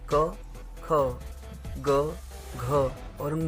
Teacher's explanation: इसका उच्चारण स्थान होता है कंठ यानी गला